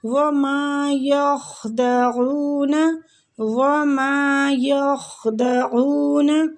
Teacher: وما وہ پہ ہونٹوں کو گول کریں گے، میم کے آگے الف مد ہو رہی ہے، میم کو کھینچیں گے